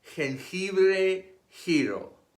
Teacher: This is an aspirated sound stronger than the English H, similar to the Scottish CH in loch or the German CH in koch.